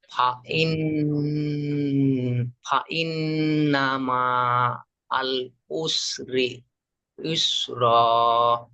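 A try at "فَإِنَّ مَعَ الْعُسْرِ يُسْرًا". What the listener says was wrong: মাশাআল্লাহ, ঠিক আছে।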